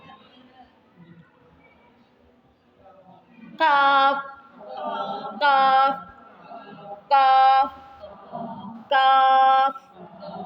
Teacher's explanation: قاف کے مخرج سے ذرا نیچے، منہ کی جانب، زبان کی جڑ کے قریب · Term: کتاب والا کاف